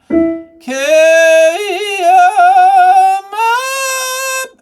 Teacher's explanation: the way I say carry, I say it kind of, with an eh sound